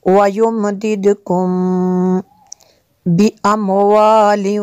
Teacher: मीम साकिन के बाद बा है तो यहाँ पे इख्फा शफ़ी होगा